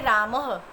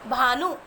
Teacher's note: स्वर के बाद में या आगे आने वाले दो बिंदुओं को विसर्ग कहा जाता है। विसर्ग का उच्चारण अर्ध है की तरह होता है, यानी विसर्ग का जब हम उच्चारण करते हैं तो ऐसा लगता है जैसे आधे है की ध्वनि निकल रही हो।